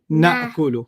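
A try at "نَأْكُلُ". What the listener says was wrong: Go back to the hiccup. Na'kulu.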